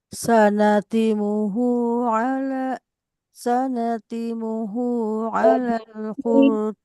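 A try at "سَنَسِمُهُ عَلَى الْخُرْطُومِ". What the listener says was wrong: Tadi sanasi bukan sanati. Sanasi muhu.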